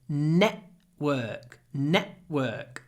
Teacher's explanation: did you notice I said network network I use this glottal stop